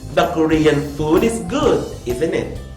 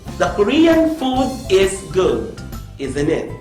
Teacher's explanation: my voice will fall in the tag question